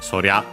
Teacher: re wa gets contracted into rya. Uh still unaccented, so sorya.